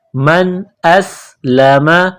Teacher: करेंगे हमजा को सीन के साथ मिलाना है प्लस करना है सीन में सीटी की आवाज पैदा करेंगे